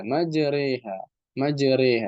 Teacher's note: Imala itu membaca harakat ya antara fathah dan kasrah tapi lebih condong ke kasroh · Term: imalah